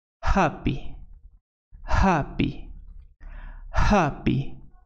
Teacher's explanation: The sound is a voiceless glottal fricative consonant. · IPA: /h/